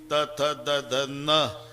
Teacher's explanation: त थ द ध न दाताशिवाय उच्चार नाही